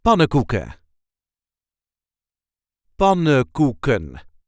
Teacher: The emphasis is on the first syllable.